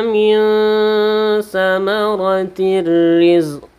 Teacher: Min juga ikhfa Hakiki samar dan berdengung